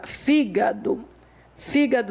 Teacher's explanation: a força dela está na antepenúltima sílaba